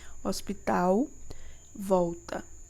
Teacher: Na primeira vez que eu pronunciei com bastante entonação para que vocês observassem que o L, ele tá com o som de U, não é? O que é explicado pelos gestos articulatórios envolvidos, ou seja, da forma que eu pronuncio, tá? · o conjunto de vogal seguida de L passa a ser produzido como ditongo